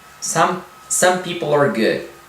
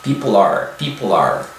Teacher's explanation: Né, apenas a língua não toca o céu da boca, mas ele tenciona a fazer isso, de modo que quando existe uma palavra seguinte iniciando em vogal, né, esse L fica evidente, people are.